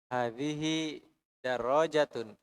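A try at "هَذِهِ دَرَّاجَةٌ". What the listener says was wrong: Darrajatun. Hadihi darrajatun. Ya, darrajatun. Ada tasydid di atas ra.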